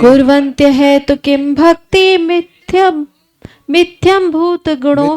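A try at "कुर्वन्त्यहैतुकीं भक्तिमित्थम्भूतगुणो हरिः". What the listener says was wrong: मिथ्यम नहीं है गुणो हरि, मिथ्या नहीं है गुणो हरि। कुर्वन्त अहेतु किम भक्तिम, फिर इत्थम संधि तोड़ लीजिएगा, इत्थम भूत गुणो हरि। कुर्वन्त अहेतु किम भक्तिम इत्थम भूत गुणो हरि।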